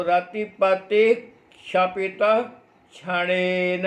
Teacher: अब क्षपितः के बाद में फिर आधा क आ गया और फिर मूर्धन्य शकार है